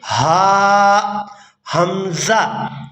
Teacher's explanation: ادنا حلق تھا جو حصہ منہ کی طرف ہے، اور اقصی حلق وہ حصہ ہے جو سینے کی طرف ہے۔ گلے کا وہ حصہ جو سینے کی طرف ہے اس کو اقصی حلق کہا جاتا ہے، اور یہاں سے بھی 2 حروف ادا ہوتے ہیں، حمزہ اور ہا۔